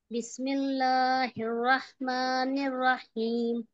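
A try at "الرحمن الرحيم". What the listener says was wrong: हे रहमा कहेंगे, हे रहमान नहीं। अगर आपने पूरा नून वहीं पढ़ दिया तो फिर अगले बार निर्रहीम जब बोलेंगी तो वो दो नून की अदायगी हो जाएगी, ठीक है। रहमा निर्रहीम, फिर से पढ़िए।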